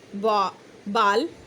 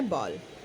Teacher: हिंदी में इसके समकक्ष ओ है, परंतु अंग्रेजी में यह कुछ कुछ आ और ओ को मिलाकर बोली जाने वाली ध्वनि है। इसे कुछ इस प्रकार भी कहा जा सकता है औ। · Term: अर्धचंद्राकार